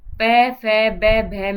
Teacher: होठ से प, फ, ब, भ, में, जो प वर्ग है वो किससे बोला जाता है, ओष्ठ से बोला जाता है